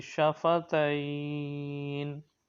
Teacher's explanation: حروف مدہ کے بعد عارضی سکون، حروف لین کے بعد عارضی سکون ہو، مد لین عارض کب ہوگا؟ حروف لین کے بعد عارضی سکون ہو تو مد لین عارض ہوگا، یعنی وقف کی وجہ سے کوئی حرف ساکن ہو جائے